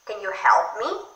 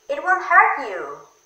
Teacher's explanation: Rising intonation can be used for general questions or for encouraging.